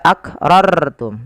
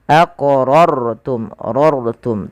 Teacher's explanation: Artinya rnya dibaca dengan tebal tidak dibaca akrartum tapi dia aqrortum rortum.